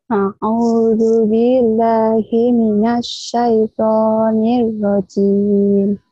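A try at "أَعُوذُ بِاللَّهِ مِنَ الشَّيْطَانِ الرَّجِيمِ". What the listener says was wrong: Kok ngomong jelas kalau baca Quran blebeb-blebeb gini? A'u, dijelasin artikulasinya, yuk. A'u, ya, yang jelas. A'u.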